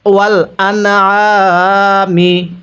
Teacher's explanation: নুন সাকিনের পরে আইনটি হলো ইজহারে হরফ, তাহলে স্পষ্ট করে পড়ব।